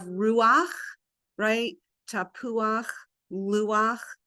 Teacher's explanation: whenever we have that ach ending with the chet, the vowel comes first and the accent moves.